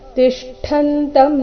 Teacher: ತಿಷ್ಠ ತಿ ನಂತರ ಷಟ್ಕೋಂಶ ಮತ್ತೆ ಠ ಕೂಡಿ ಸಂಯುಕ್ತಾಕ್ಷರ, ಇಲ್ಲಿ ಟ ಬರಬಾರ್ದು, ಠ.